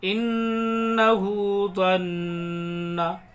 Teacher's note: इन्नहु ज़न्ना, दोनों नून में गुन्ना करेंगे।